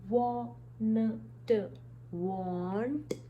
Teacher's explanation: Just before T we have a very slight sound of n.